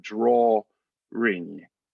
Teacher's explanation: drawing drawing and again if you think about the vowels themselves the draw is accented so you're going to get that ah sound draw ring there's almost little eye but it's more schwa so